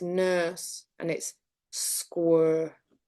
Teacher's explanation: Actually, nurse and square are merged in Blackburn, so it's nurse and it's square.